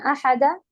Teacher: احدا میں ایک الف پڑھ کے رکیں گی آخر میں